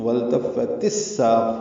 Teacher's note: فا کو اصل میں تا سے ملانا تھا، وَالْتَفَّت تھا، لیکن الساق کا حمزہ عارضی ہونے کی وجہ سے تا کے نیچے زیر لگائے گی تو وَالْتَفَّتِ السَّاقُ ہو گیا. ادغام شمسی ہوگا، سا الف مدہ ہے، دو حرکات لمبا کریں گے، قاف پر پڑھیں گے.